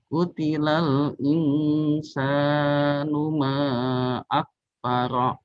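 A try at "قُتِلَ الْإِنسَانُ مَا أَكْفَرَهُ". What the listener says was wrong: Akfarah. Haknya harus jelas. Akfarah. Akfarah. Huruf H itu adalah dia huruf yang paling sifatnya paling lemah. Jadi dia harus diberi harus diberi dorongan. Harus diberikan dorongan. Qutilal insanu ma akfarah. Akfarah.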